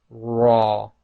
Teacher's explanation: you should notice when you say that the back of your tongue lifts up as well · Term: the letter raw